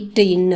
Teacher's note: நாக்கோட நுனியை மடக்கி மேல கொண்டு வந்து இட்டு இன் அப்படின்னு சொல்லணும்